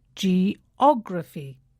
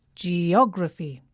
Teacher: the stress falls on the third syllable from the end geography not geography geography or geography it's geography words that end